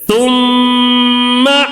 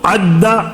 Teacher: تھوڑا ایک الف کے برابر آواز کو روک کر غنہ کر کے پڑھیں گے